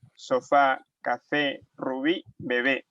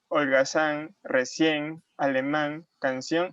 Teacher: las palabras agudas son las que tienen acento prosódico en la última sílaba